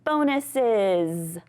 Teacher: So bonuses has that /z/ that little bit of a buzz. · Now, when we add that es to it it actually sounds more like a /z/ sound.